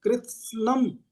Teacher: कृत्स्नम, थोड़ा जीभ को व्यायाम देना पड़ेगा। कृत्स्नम, वहां पे आधा ता और सा भी है, उसको भी बोलना है।